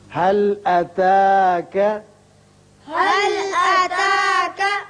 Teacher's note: یہاں لام پر قلقلہ نہ ہو